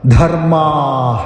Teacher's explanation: ജാതിധർമ്മാഹ ജാതിധർമ [സംഗീതം] ധ മഹാപ്രാണാക്ഷരം ആയതുകൊണ്ട് ബലപ്പെടുത്തി ഉച്ചരിക്കുക ധർമ്മാഹ അവിടെ ദീർഘാക്ഷരമാണ് ധർമ്മാ എന്ന് ദീർഘമായിട് ഉച്ചരിച്ച് വിസർഗ്ഗം ചൊല്ലി നിർത്തുക